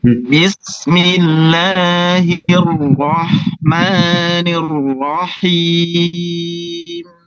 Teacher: Langsung dari kasrah masuk ke ra tafkhim. Jangan tipis dulu mas baru ke tafkhim.